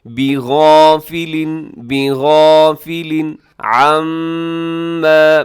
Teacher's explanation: تنوین ہے لام کے نیچے اور آگے عما کے شروع میں عین ہے، یہاں اظہار کیجیے گا · شروع میں عین ہے، یہاں اظہار کیجیے گا، بغافل، بغافل عما، میم مشدد ہے غنہ کیجیے گا